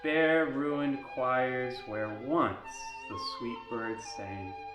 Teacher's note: Perhaps the glottal stop necessitated by the first sound in once interrupts the flow too much.